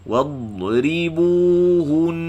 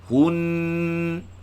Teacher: Bila waqaf pada nun musyaddadah, panjangkan dengung tadi. Hun. Panjangkan dengung itu menunjukkan waqaf pada nun musyaddadah.